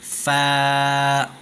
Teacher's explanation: اوپر کے جو دانت ہے بڑے وہ نیچے کے ہونٹ پر لگتے ہیں، تب جا کر فا ادا ہوتا ہے